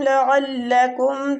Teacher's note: عین وسط الحلق یعنی حلق کے درمیان والے حصے سے